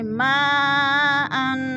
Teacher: ما پہ مد متصل ہے، چار الفی مد ہے، چار الف کے برابر ہم نے اس کو لمبا کر کے پڑھنا ہے